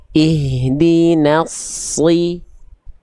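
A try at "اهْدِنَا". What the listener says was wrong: Oke, tapi no-nya jangan ke bawah tebal. No, tapi na. Ihdina.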